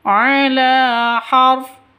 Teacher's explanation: Ala harf rnya tafkhim tebal ya. Karena sebelumnya fat fathah maka ditebalkan. · Ala harf fanya jangan sampai dibuang tetap dibaca tapi su sukun.